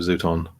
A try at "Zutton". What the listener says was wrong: You pronounce it Zooton. That's the South Australian accent. Zutton.